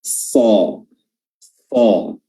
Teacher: dia memiliki sifat isti'la, ya, sifat yang dimana pangkal lidah itu terangkat sehingga menimbulkan efek suara tebal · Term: huruf so